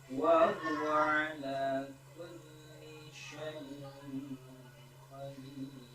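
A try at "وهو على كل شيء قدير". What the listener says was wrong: Linya kurang itu Pak Ustaz. Wa huwa ala kulli syai. Gitu. Kulli syai gitu. Li syai gitu.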